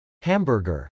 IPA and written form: hˈæmbɚgɚ (hamburger)